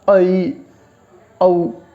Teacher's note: जिह्वा सबसे कम ऊपर उठती है